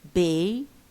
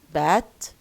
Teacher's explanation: However, during the hold or compression stage, a vibration of the vocal folds occurs in the production of B. يعني وانا بنطق البي العادية بتاع book, انا بيبدأ يحصل vibration even before I say it, even before I release air.